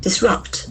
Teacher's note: >> Disrupt. It has got two syllables and the accent falls on the second syllable.